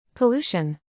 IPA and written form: pəˈluː.ʃən (pollution)